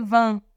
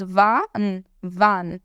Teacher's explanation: Quando eu falo wann, o meu A tá nasal. Quando eu falo wann, não tem nasalização.